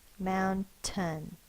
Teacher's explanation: So when we say mountain, we stress the first syllable, mound, and then tin.